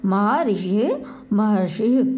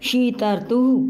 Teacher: महा ऋषि, अब ये अर आ गया, आपने देखा री का अर, महा ऋषि, आ के बाद री आने पर अर हो गया है। अर की आवाज़ आप सुनेंगे, अनुभव करेंगे, जब बोलेंगे तो आपको पता लगेगा।